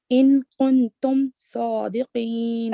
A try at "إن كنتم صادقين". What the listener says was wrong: Okay, so the kaf is also a light letter. Your sad was perfect. And qaf was perfect on the last word. In kuntum, kaf, lower it because it's not one of the 7 heavy letters.